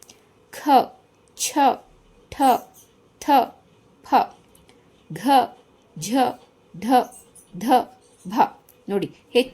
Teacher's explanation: ವರ್ಗದ ಎರಡು ಮತ್ತು ನಾಲ್ಕನೇ ಸಾಲಿನಲ್ಲಿ ಬರುವ ಹೆಚ್ಚು ಉಸಿರಿನಿಂದ ಉಚ್ಚರಿಸಲ್ಪಡುವಂತಹ 10 ಅಕ್ಷರಗಳಿಗೆ ಮಹಾಪ್ರಾಣ ಅಂತ ಕರೀತಾರೆ